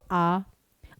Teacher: आपका पूरा मुंह खुल जाता है। तो केवल इकलौता आ ऐसा स्वर है जो है आपका विवृत। जिसमें आपका पूरा मुंह खुलेगा